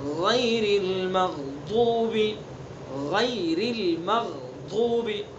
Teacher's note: غین کی جو صفت ہے استعلا، پر کرنا، منہ بھر کے پڑھیں گے